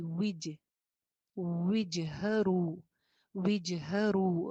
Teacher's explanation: واو کے نیچے زیر ہے، ہونٹ گول کرنے کے بعد اس کی زیر کی ادائیگی ہوگی وج، وجہرو، وجہرو.